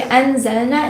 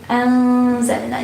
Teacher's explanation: So ikhfa means that when you have noon sakina or tanween followed by one of the ikhfa letters, you kind of conceal the noon. So you don't pronounce it clearly.